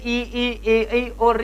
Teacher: इनका उच्चारण करने पर श्वास वायु जीवा के आगे वाले भाग में टकराती सी महसूस हो रही है , हमें कंपन का सा महसूस करवा रही है। जैसे ई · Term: अग्र